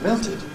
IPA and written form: ˈmeltɪd (melted)